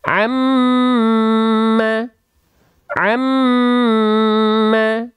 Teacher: mim yang bertasydid mim ditahan dua harakat pelafalannya